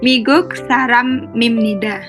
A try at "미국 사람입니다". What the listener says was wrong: Yes, nggak usah ragu-ragu. Lanjut.